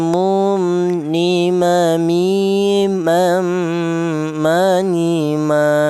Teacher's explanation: huruf mim ini keluarnya huruf berasal dari kedua bibir yang rapat